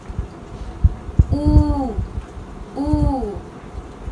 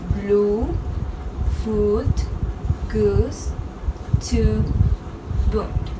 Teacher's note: The tongue is back and the lips are round.